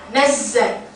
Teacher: Zai ini sifatnya sofir. Sofir kayak bersiul.